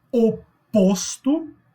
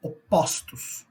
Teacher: no singular tem um som fechado e no plural tem um som aberto? Isso é o fenômeno de metafonia.